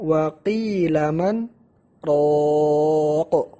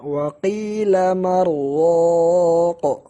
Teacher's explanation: memotong suara tanpa bernafas dan kemudian melanjutkan ke bacaan yang setelahnya